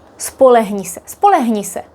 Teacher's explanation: When we speak quickly, the h might not be like really, really strong, especially when it's not at the beginning